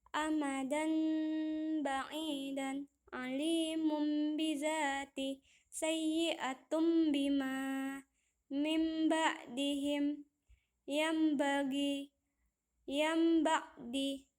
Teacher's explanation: Cara membacanya adalah menggantikan huruf nun sukun dan tanwin menjadi huruf mim sukun, lalu disembunyikan ke dalam huruf ba, disertai dengan berdengung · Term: iqlab